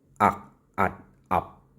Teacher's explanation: The stop ending doesn't differentiate between aspirate consonant or non-aspirate. It's just a silent voiceless stop.